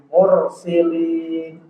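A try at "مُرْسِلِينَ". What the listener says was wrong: Mur. Jangan bergetar terlalu banyak. Mur.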